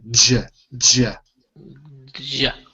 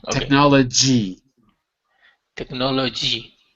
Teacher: it's not a smooth J it's a d j together